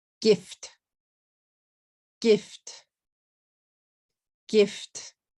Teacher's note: If you say it in katakana, gifuto would be 3 syllables, but it's really 1 syllable, gift.